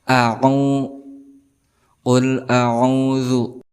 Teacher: hamzah ini berada di pangkal, sedangkan ain berada di tengah-tengah tenggorokan